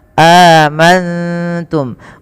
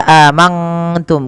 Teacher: Cara membacanya, nunnya samarkan kepada huruf ta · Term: ikhfa hakiki